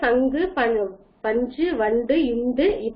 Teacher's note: அதே மாதிரி மென்தொடர் குற்றியலுகரமானது மெல்லெழுத்துக்களை மெல்லின எழுத்துக்களான மூக்கொலிகளை தொடர்ந்து அமையக்கூடியதுதான் மென்தொடர் குற்றியலுகரம்